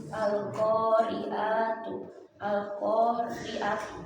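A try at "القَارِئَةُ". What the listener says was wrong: Jadi pendek ya. Jadi hati-hati. Al-Qari'atu menjadi Al-Qari'atu.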